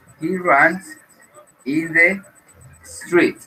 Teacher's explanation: He runs, la U, aquí en este verbo, se pronunciaría como una A.